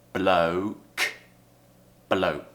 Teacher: so we have schwa uh and then ooh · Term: diphthong